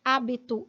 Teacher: hábito que é uma proparoxítona vai ter mais força na sílaba antepenúltima